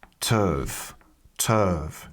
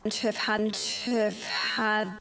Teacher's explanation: we've also got H dropping here. So we've got t and uv, and these two together sound more like turv, turv.